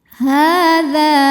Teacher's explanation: Hadza, hukumnya adalah mad tabi'i muqaddar sebab ada huruf ha berharokat fathah panjang. Cara bacanya panjang haknya 2 harokat